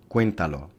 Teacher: el acento prosódico recae sobre la antepenúltima sílaba se clasifica como una palabra esdrújula